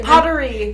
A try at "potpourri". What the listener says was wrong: The T is silent. P-O-T. P-O. U-R-R-I? That's not right either. P-O.